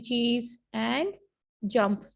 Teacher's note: combination of a stop and a fricative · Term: एफ्रिकेट्स